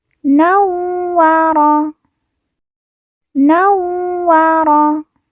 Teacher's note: Wa yang bertasydid kita baca ditekan dan ditahan 2 harokat.